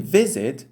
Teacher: in visit, the first syllable is stressed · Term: syllable stress